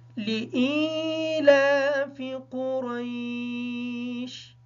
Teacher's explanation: لام کو باریک پڑھیں گے، اس وجہ سے لام کے نیچے زیر ہے۔ قاف کو پر پڑھیں گے، را کو پر پڑھیں گے، اس وجہ سے کہ اس کے اوپر زبر ہے۔ شین حالت وقف کی وجہ سے ساکن ہوگی۔ · حمزہ کو ادا کرتے وقت خیال رکھیں گے کہ حمزہ مجہول ادا نہ ہو۔ لام کو باریک پڑھیں گے، اس وجہ سے لام کے نیچے زیر ہے۔ قاف کو پر پڑھیں گے، را کو پر پڑھیں گے، اس وجہ سے کہ اس کے اوپر زبر ہے۔